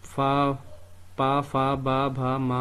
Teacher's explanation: तो यह ओष से उच्चारित होते हैं